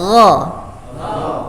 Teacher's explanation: Nah, sama dengan kha, tetapi kalau kha ada hembusan anginnya, kalau ghain ditahan, hanya getarannya ada di tenggorokan. Ditahan, jangan sampai berhembus.